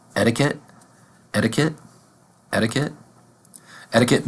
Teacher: is a t at the beginning of this of the word in American English we are going to pronounce the first T like a d